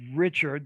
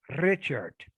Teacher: just Richard, the retroflex liquid R, but then we have Richard more with a trilled R.